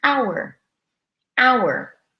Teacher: This is good news for you because this is a case where you don't need to say that difficult H sound. We write the H, but we do not say it. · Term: The H is silent